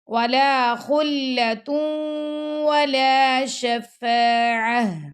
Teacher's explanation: ہم نے گول تا کی جو آواز تھی اس کو ہا میں بدل دیا